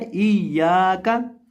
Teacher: या को एक अलिफ के बराबर थोड़ा सा लंबा करेंगे और काफ को बिना लंबा किए पढ़ेंगे। और यहाँ अक्सर लोग इसको गलत पढ़ देते हैं, अक्सर लोग इसको पढ़ देते हैं इया का, इस तरह से पढ़ देते हैं, यानी या के अंदर एक मजहूल आवाज़ पैदा करके पढ़ देते हैं।